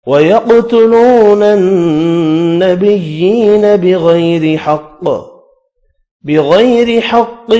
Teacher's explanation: غین اور قاف حروف مستعلیہ ہے، پر پڑھے جائیں گے